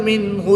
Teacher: نون ساکن کے بعد حرف حلقی میں سے ہا رہا ہے تو یہاں پر اظہار ہوگا، نون ساکن کو خوب ظاہر کر کے پڑھیں گے۔